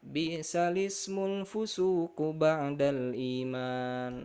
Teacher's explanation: memindahkan yang tadi harokat i-nya di hamzah wasal ini, tapi jadi masuk mundur ke lam. Jadi bacanya bi'salismul fusuku ba'dal iman. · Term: nakal